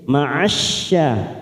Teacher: syanya kita panjangkan 2 harokat karena fathah berdiri